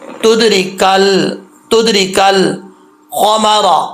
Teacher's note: را کے نیچے زیر ہے تو را بریک پڑھا جائے گا، پر نہیں پڑھیں گے